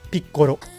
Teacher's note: that last part is not an R. It's an L. It's kind of somewhere in between. You just lightly tap the roof of your mouth and you get picoro.